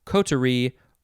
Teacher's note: you can emphasize the first syllable